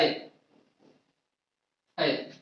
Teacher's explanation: ऐ मिलके बनता है आ प्लस ई, आ प्लस ई के मेल से मिलके बनता है ऐ